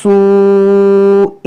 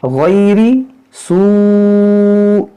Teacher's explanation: مد متصل ہے، اس کو 3-4 الف کے برابر کھینچ کر آپ پڑھیں